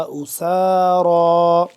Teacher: أُسَارَىٰ سیٹی کے بعد سین کی اور را موٹا،